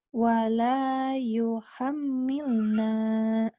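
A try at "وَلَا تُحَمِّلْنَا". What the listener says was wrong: Kan you tapi tu. Iya, salah Mbak, salah. Wala tuhammilna.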